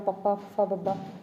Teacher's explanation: ਧੁਨੀ ਉਚਾਰਨ ਵਿੱਚ ਦੋਵੇਂ ਬੁੱਲ੍ਹ ਆਪਸ ਦੇ ਵਿੱਚ ਜੁੜ ਕੇ ਜਾਂ ਹੇਠਲਾ ਬੁੱਲ੍ਹ ਉੱਪਰਲੇ ਦੰਦਾਂ ਨਾਲ ਛੋਹ ਕੇ ਹਿੱਸਾ ਪਾਉਂਦਾ। ਦੋਵੇਂ ਹੋਠ ਲਚਕਦਾਰ ਹੋਣ ਕਰਕੇ ਗੋਲ ਜਾਂ ਅਰਧ ਗੋਲ ਹੋ ਜਾਂਦੇ ਨੇ, ਜਿਹਦੇ ਵਿੱਚ ਤੁਸੀਂ ਗੋਲ ਜਾਂ ਅਗੋਲ ਧੁਨੀਆਂ ਬਾਰੇ ਵੇਰਵਾ ਦੇ ਸਕਦੇ ਹੋ। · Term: ਹੋਠੀ ਲਾਈਨ